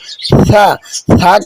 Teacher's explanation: জিহ্বার আগাটা সামনের উপরের বা নিচের যে দুটি দাঁত আছে এই দাঁতের আগার সাথে লাগিয়ে হালকা বাতাস বেরিয়ে উচ্চারণ করতে হবে